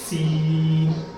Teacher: سین کو آ کر سیٹی کی آواز میں پڑھنا ہے